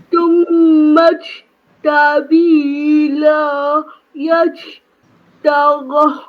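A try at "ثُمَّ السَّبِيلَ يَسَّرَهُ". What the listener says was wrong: Okay, la tu tak panjang. Cuba tak panjang kan boleh? Sebutan tu dah jelas lah. Sabila yassarah.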